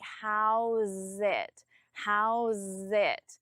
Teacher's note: even though there is no connection between it and going, I still don't pause between them